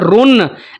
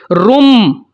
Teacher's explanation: نون کی آواز کو یا پھر تنوین کی آواز کو ہم نے میم کی آواز کے ساتھ بدل کر پڑھنا ہوتا ہے اور اس کے اوپر غنہ بھی کرنا ہوتا ہے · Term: اقلاب